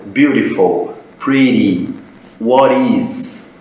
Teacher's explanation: O T, quando ele está no meio de duas vogais, ele tem um som parecido com o nosso R.